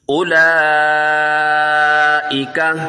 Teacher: اس کو کھینچ کے پڑھیں گے، مد منفصل ہے، 4 الف تک کھینچنا ہے، 2 3 2.5 4 الف تک۔